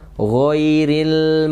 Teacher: sifatnya tebal ya sobat tercela dan di sini dalam keadaan sukun dalam keadaan sukun ghoin itu ada mengalir dan mengalirnya juga tebal bunyinya